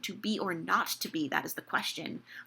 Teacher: The not is suddenly feels like a tangled knot. Not gets so much more attention because suddenly it's stressed.